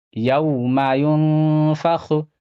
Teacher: یہاں پہ واو ساکن سے پہلے زبر ہے، واو لین ہوگا